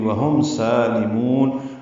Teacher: سالمون میں سین کو 2 حرکات لمبا کرنا ہے، لام باریک ہے اور میم کو لمبا کریں گے، وقفاً مد عارض للسکون ہے.